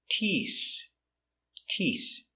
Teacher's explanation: So remember, we start with a T sound with our tongue inside. And we finish with the TH with the tongue touching the teeth, making the air.